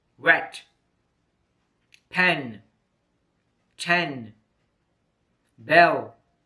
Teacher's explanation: E is a single and short vowel sound. The mouth is mid-open. The tongue position is in front side of the mouth. The example words are wet, pen, 10, bell.